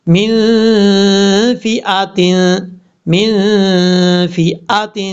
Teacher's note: نون ساکن کے بعد فا آ رہا ہے، حروف اخفا میں سے، یہاں پہ اخفا کا غنہ ہوگا، 1 الف کی مقدار غنہ کر کے پڑھا جائے گا، من فئۃ۔